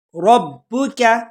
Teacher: را کو موٹا، کاف کو باریک، ربک، اور با کو جھٹکے کے ساتھ پڑھیں گے۔ با بھی حروف قلقلہ میں سے ہے۔